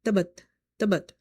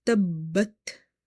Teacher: If somebody read tabat, it means that ba is once. but here ba is twice.